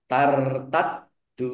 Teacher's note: dalnya dibaca dobel ada tasdidnya. Dal wawu sukun mad th'i panjang dua harakat.